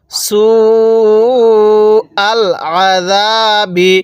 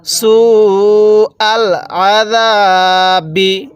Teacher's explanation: এই সিনের মধ্যে আমরা ৪ আলিফ টান দিব। কেন? মদের হরফের উপর এরকম যদি মোটা চিহ্ন থাকে, এরপরে যদি এরকম গোল হামজা থাকে, তাহলে সেখানে ৪ আলিফ টেনে পড়তে হয়।